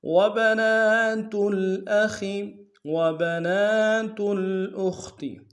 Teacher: نون کے اوپر کھڑا زبر ہے، ایک امتحان میں کھینچیں گے، تا کو آگے لام کے ساتھ ملانا ہے، لام ساکن غنہ نہیں ہوگا۔ حمزہ کو نم سے ادا کریں گے، خا کو موٹا ادا کریں گے۔